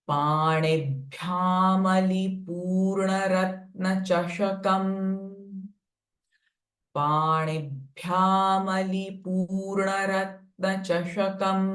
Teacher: Now panibhya bh is a mahaprana sound. So feel that force as you chant this sound.